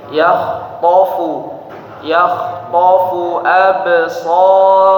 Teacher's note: ketika ba sukun, ingat sekali lagi tadi qalqalah tapi tidak sampai putus bunyinya